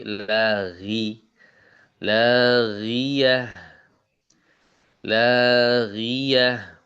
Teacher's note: untuk menampilkan huruf ghain yang tafhimnya melemah atau hilang. Jadi enggak lagi gi tapi laghi lagiah lagiah gitu ya.